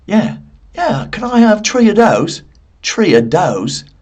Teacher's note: there are some Irish people that say tree.